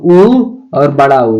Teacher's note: और क्या हो जाएगा जी, ओष्ठ है, तो उ और बड़ा ऊ का उच्चारण स्थान ओष्ठ हो जाएगा